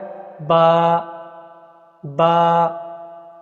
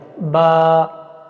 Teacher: اس کے بعد کا جو حرف ہے وہ ہے با، با، اور با جو ہے نا یہ ہونٹوں کی خشکی سے ادا ہوتی ہے، با۔ اور خشکی اور تری ہے کیا؟